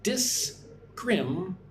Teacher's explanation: Put the stress on the second syllable. 1, 2. Scrim.